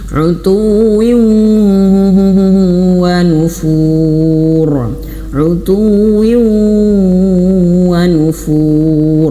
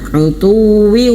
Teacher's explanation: ketika idgham bi gunnah itu wajib masuk hidung.